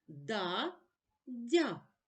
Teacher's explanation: перед а звук приголосний д твердий позначимо однією рисочкою перед я звук дь м'який